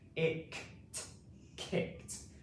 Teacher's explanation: here we have ed at the end, and this makes the t sound in this word. It can make the d sound and it can make the id sound, but in this word it makes the t sound.